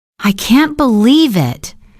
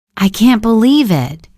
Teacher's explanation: The first one sounds surprised. The second one sounds flat, maybe even a little bored.